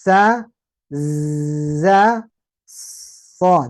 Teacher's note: ujung lidah mengarah ke ujung gigi seri bawah.